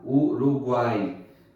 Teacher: É um tritongo oral, nesse caso, porque não tem o tom nasal